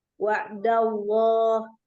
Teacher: Wa'da itu ada ain dialirkan tanpa diangkat. Jadi langsung wa'dallah.